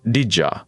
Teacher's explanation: The most famous example is did you, which becomes didja. The D and the Y melt together into a soft J sound. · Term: assimilation